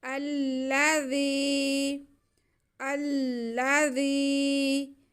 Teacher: आगे हमारे पास ज़ाल के नीचे ज़ेर और या साकिन है, तो इसको हमने या मद्दा है, थोड़ा खींच के ज़ाल की आवाज़ को पढ़ना है।